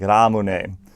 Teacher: The only thing difficult to say in Japanese for the pronunciation's sake is the R sound. It's between a D and an L, so it's ra, like Ramune.